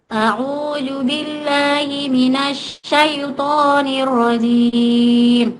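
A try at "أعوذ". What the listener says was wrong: Stop, stop. Bukan a'uju ya, a'udzu, zal. A'udzu. Ujung lidahnya dikasih keluar digigit, pasti ketemu. A'udzu. ulang, a'udzu. A'udzu. Bukan a'uju, a'udzu. Za. Coba ujung lidah itu keluar di gigi. Za. A'udzu. A'udzu. Za. Bu, itu di situ zal bukan jim.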